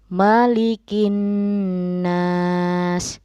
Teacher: Malikin nas, yang merajai seluruh manusia. Ini sama, nunnya dibaca ghunnah atau double